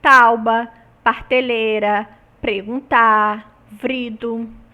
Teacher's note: trata-se de uma metátese, ou seja, o fonema R mudou de posição no interior da sílaba